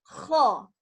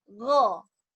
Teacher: Nah, huruf kho keluar nafas, huruf go enggak keluar nafas.